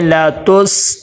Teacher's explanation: نہیں کرنا، تا کو سین کے ساتھ ملائیں گے، لا تس، قلقلہ نہ ہو، آواز رک جائے